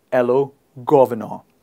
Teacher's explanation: We don't pronounce the R in the end